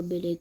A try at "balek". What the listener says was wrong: T'as dit Belek ou Balek? T'as dit Belek. T'as dit Belek.